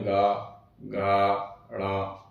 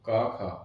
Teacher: तो आप जब इन वर्णों को बोलेंगे तो ऐसा प्रतीत होता है हमें कि हमारे गले में घर्षण उत्पन्न हो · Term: घोष